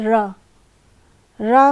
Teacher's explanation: कहलाती जैसे र र में उच्चारण करने में थोड़ा सा क जो उच्चारण अवयव है जहां से उच्चारण हो रहा है उसमें हल्का सा कंपन होता है